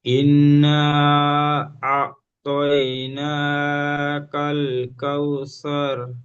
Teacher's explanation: সুন্দর পড়ছিলেন তারপর আস্তে আস্তে গুন্নাটি কম হয়ে গেল খেয়াল করবেন নুন তাজদিদ এক আলিফ গুন্না করতে হবে